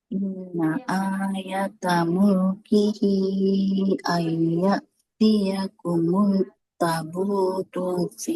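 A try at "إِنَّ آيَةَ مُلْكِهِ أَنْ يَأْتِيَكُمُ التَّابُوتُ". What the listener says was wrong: Tabut. Nah, taknya di sini harus panjang. Taknya fathah bertemu dengan alif.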